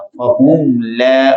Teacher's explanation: اب یہاں میم ساکن کے بعد نہ تو میم ہے نہ با ہے، تو میم کو ظاہر کر کے پڑھا جائے گا۔ فَهُمْ لَا، غنہ نہیں کریں گے میم میں، فَهُمْ لَا يَرْجِعُونَ۔ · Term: اظہار شفوی